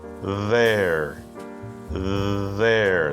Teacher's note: the voiced th sound with your tongue vibrating between your teeth